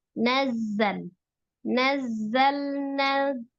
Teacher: Sifat huruf zai adalah as-safir, ada desisan.